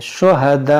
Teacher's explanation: یہاں پر رکیں گے تو یہ حمزہ کو ساکنہ کر دیں گے, تو جھٹکا دیں گے